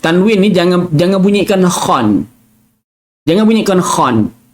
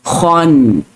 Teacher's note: tanwin ni ada nun yang tersembunyi